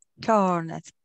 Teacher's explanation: Now to get the D sound where you're not saying the ed, you're just saying the letter D. This sound of ED, the D sound, comes after a voiced consonant.